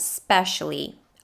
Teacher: omitting the e at the beginning